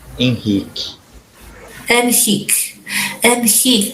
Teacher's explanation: my Brazilian students, they pronounce their R's like H's